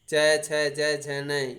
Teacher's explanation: इनका उच्चारण स्थान होता है तालु, तो इनको नाम दे दिया तालव्य वर्ण।